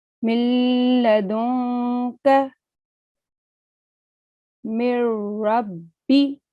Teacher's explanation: if noon sakin or tanween appears before lam or ra, so we have to read it clearly without any nasalization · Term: complete assimilation